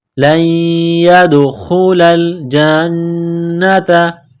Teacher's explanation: لام کو لام کے ساتھ پلس کرنا ہے، لَن يَدْخُلَ الْجَنَّةَ، نون مشدد ہے، غنہ کریں گے، آواز ناک میں چھپائیں گے